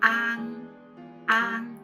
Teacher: with the A long and NG short. But when A with the smiley face combined with NG, then you have to say the A short, because it's a short vowel, and then the NG longer.